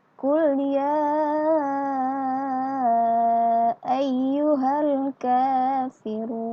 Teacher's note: Ya, dibaca panjang sekitar 5 ketukan. Kemudian huruf run dibaca panjang sekitar 2 ketukan. Dan ka juga dibaca panjang sekitar 2 ketukan.